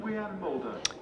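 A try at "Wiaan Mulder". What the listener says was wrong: Vian, or Wian, but it is Vian. With he pronounces it, or his mum pronounces it, his parents, with a V. So he told us when he came to Leicestershire.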